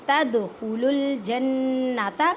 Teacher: کلکلا کریں، کلکلا کا مطلب ہے ہلا کر پڑھنا، تدخلوا الجنة نون مشدد غننے کے ساتھ پڑھیں